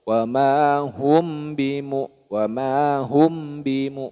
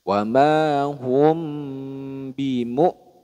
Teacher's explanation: Nah, itu kurang tepat. Jadi ditahan dulu bunyi mim sukunnya.